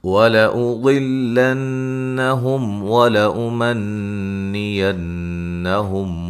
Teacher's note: ضاد کو موٹا ادا کریں گے ، نون مشدد پہ غنہ ضروری ہے، میم ساکن کا اظہار